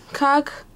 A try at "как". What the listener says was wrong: Как? Not like cock.